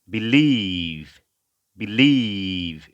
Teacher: পরবর্তী শব্দ আমরা হচ্ছে believe, believe, হ্যাঁ, বি শর্ট ই, বি, এবং স্ট্রেস হচ্ছে লিভের উপরে, এলের উচ্চারণ ল এবং লং ই